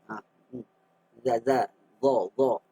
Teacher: makhrajnya ialah antara belakang hujung lidah. Kemudian bertentangan hujung dua gigi kacip tengah. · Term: huruf za